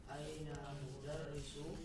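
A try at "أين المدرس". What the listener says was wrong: Ainal, jangan lupa ya, al asyamsiyah dengan al qamariyahnya dipakai ya. Ainal mudarrisu, terus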